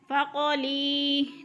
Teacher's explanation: لی کے اوپر یا مدہ ہو رہا ہے، یا ساکن سے پہلے لام کے نیچے زیر ہے تو یا مدہ کو ایک الف کے برابر کھینچ کر پڑھنا ہے